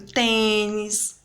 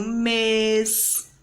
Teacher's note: o acento circunflexo ele indica a sílaba tônica e o som fechado na vogal a e na vogal é